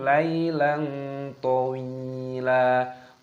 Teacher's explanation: Lam alifnya di sini ada fathah tanwin bertemu dengan to, hukumnya dibaca ikhfa, disamarkan